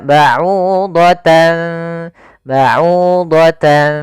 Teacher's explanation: bunyi nunnya tapi disamarkan kepada makhraj huruf setelahnya maka baudan baudan seakan-akan ada ng tapi bukan karena dia ikhfaan